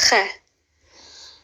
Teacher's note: This letter kh, it's kind of like a snoring sound, like, you know when little kids pretend to snore? It's not really a gargling ghain, but it's similar.